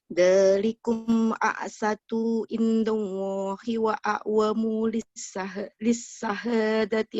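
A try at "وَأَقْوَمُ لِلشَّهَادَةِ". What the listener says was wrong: Sya bukannya sa. Lisyahadati.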